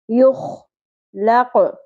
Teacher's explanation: قوف کو پر بھی کریں گے اور قلقلہ بھی کریں گے